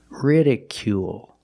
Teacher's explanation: make the long u sound plus the dark L at the end of the word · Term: long oo sound